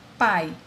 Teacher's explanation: A é a vogal e semivogal. A vogal A, ela é mais forte. Você tem a sonoridade dela é mais intensa. O I é o semivogal, é mais fraco. Portanto, é um ditongo.